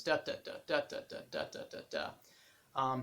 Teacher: I'm not sure what the technical term for that is, but it has this kind of galloping momentum to it. And then the meter, of course, is not iambic, it's dactylic, which is one stressed syllable followed by two unstressed. So it's also kind of got this galloping momentum, this da da da da da da da da da da.